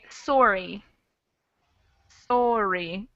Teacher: a Canadian might say sorry, sorry, more of an O sound.